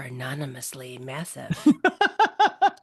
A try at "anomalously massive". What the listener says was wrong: It's anomalously massive. An anomalously massive. Anomalously massive. You put too many syllables in it, it sounds like drunk, right?